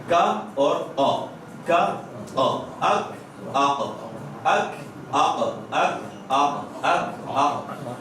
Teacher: زبان کا جو اینڈنگ کنارہ جہاں زبان ختم ہو رہی ہے وہ اوپر لگے گا تالو